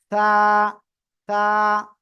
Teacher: জিহ্বার আগা সামনের উপরে 2 দাঁতের আগার সাথে লাগিয়ে নরম আওয়াজে উচ্চারণ হবে